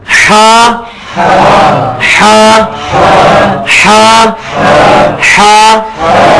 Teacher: جو حلوائی والی ہے نا, اس کو وسط حلق سے نکالنا ہے, حلق کے درمیان سے. اور یہ جیسے ہم کبھی آپ نے وہ ہیوٹ کھائی ہو یا یہ ہوسٹ وغیرہ, یہ کافی, تو یہ والی جگہ جو ہے نا یہ ہا ہے.